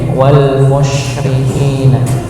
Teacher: Berikutnya ahlul kitabi wal musyrikina, ya, seperti halnya ayat pertama dibaca shin, ya, wal musyrikina, ya, musyri, ya. Karena ketepatan pada huruf sin ini tempatnya di pertengahan lidah, maka monyongnya cukup pada mim saja. Sinnya tidak perlu dimonyongkan musyrikin, tapi musyrikina, ya.